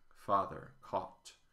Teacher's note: When I say caught, I use the same vowel as in father, caught father, the open-backed, unrounded a.